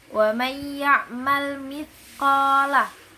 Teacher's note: ada nun mati bertemu dengan ya, itu di situ ada idgham bigunah